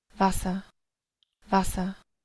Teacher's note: notarán que este termina con esto, termina con una A, no está usando la R.